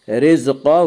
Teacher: قاف کو پر پڑھیں گے، قاف حروف مستعلیہ میں سے ہے۔